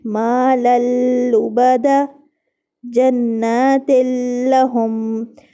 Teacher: دو زبر اور دو زیر کی جو تنوینیں ہیں یہ اگلے حرف لام کے ساتھ ادغام تو کر رہا ہے لیکن غنہ یہاں پر نہیں ہو رہا